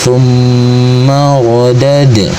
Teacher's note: Ro dibunyikan secara tafkhim atau dibaca dengan suara tebal, sebab huruf ro berharokat fathah atau baris di atas, pangkal lidah terangkat atau dinaikkan.